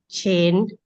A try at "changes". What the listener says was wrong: The only word we need to practice is changes. I think here you said change. changes. Easy little mistake with the S. Sometimes it's hard to see.